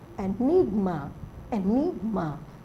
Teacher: So enigma is stressed on the second.